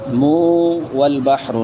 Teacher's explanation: نون تنوین بعد میں واو ہے تو یہاں پہ ادغام مع الغنہ ہوگا.